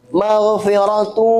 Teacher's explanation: Maghfiratu tanwin bertemu dengan waw maka dibaca idgham bi gunnah. Maghfiratu dia masuk ke hidung khayshum. Ada gunnahnya, ada dengungnya ya.